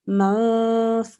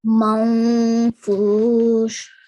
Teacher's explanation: we read it with a partial nasalization, which means ikhfa